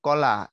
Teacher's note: ক বললে যে জায়গাটায় লাগে ওটা কিন্তু মূলত নরম তালু